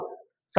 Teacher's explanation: सा जब बोलोगे तो जीभ जो है वो वायु को रोकती है कि भाई धीरे-धीरे जा। तो वहां पर घर्षण होता है